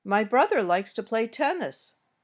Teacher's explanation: my voice went up a little on brother then back down and up on tennis and finally down at the end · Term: intonation, melody